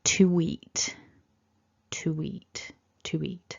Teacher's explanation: an E is because of the mouth shape that we're making we get this little intrusive W sound or a linking W um which makes the flow sound more like this to eat